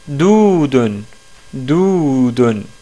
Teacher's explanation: on n'entend pas la consonne waw. Mais par contre, on entend bien qu'il y a un prolongement du premier del. Doudun. Doudun. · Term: voyelle longue